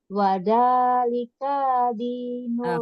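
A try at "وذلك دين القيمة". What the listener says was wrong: K-nya pendek, kayak tadi bagus. K-nya pendek.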